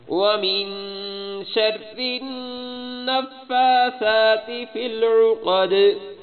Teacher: ومن پہ غنہ، شر النفا نون پہ بھی غنہ